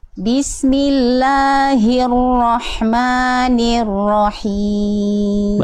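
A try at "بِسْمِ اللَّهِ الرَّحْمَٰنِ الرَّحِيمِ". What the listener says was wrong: Bagus, insyaallah.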